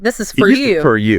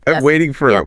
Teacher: For often reduces to fur.